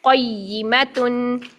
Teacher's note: لین نہیں بنانا بلکہ قاف کو یا ساکن کے اندر فوراً ملانا ہے اور پھر یا کی کسرہ بھی، یا کی زیر بھی ادا کرنی، کیونکہ یہاں پر جو یا کی شد ہے وہ زیر کے ساتھ ہے.